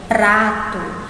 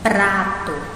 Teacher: Dá uma tremidinha na sílaba em que esse R se encontra